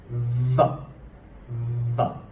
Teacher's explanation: I put my teeth against the bottom of my lip, but instead of a soft F, I press down I speak it a lot more pronounced.